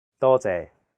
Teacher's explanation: the first character is in high flat tone first tone it means many and the second character is a low flat tone sixth tone it means thanks say altogether it's dolte okay one last time